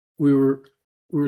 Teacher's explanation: It's almost as if my lips never leave the W position in between the two words.